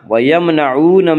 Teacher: وہ واو جو ساکن ہو اور اس سے پہلے پیش ہو، وا مدہ کو ایک الف کے برابر کھینچ کر پڑھیں گے